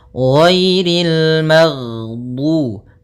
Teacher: ghain termasuk salah satu sifat huruf yang dia adalah sifat rokhawah, yang dimana suaranya mengalir. Nah, tapi dia juga termasuk sifat huruf yang dia sifatnya adalah jahar.